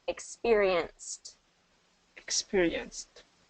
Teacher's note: So instead of experienced, because with the ed ending, T. Experience ends in a voiceless sound, right? So we're going to do the voiceless T at the end.